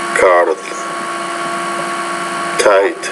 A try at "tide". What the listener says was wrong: Pronounce the T with more air, so it's not dite, but tight, tide, tip, dip. So you want to make sure we can differentiate between the T and the D. Both are velar consonants, but the T is a voiceless consonant. The D is a voice consonant.